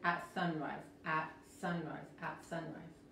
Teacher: la S se pronuncia como la Z